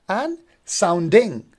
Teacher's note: Sound would be stress one and ding would be unstressed.